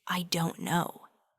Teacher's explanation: That t sound in don't actually often changes to an r sound when it links with no. So you're not actually pronouncing a hard t sound.